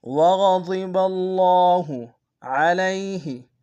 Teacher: علیہ میں عین کو گہرائی سے ادا کریں